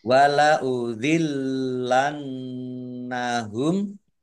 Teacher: Wala udhillannahum, lamnya dibaca double, ada tasdidnya. Nun tasdid dibaca gunnah atau mendengung, ditahan 2 harokat.